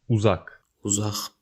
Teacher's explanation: Note that at the end of a word, Q is pronounced H.